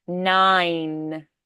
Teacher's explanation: you start with that closed palate, you pop open to the ah, and then it has to glide through nine and go back to the closed palate again. So it's closed palate, open, two vowel sounds, and then back to that nine, closed palate.